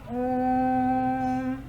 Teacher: ह्रस्व और दीर्घ दोनों से अधिक समय लगता है प्लुत स्वर के उच्चारण में।